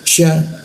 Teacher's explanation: Fir sya ada huruf sya di tengah-tengah lidah. Sya ada ee rongga udara sedikit ya. Jadi hembusannya cukup keras.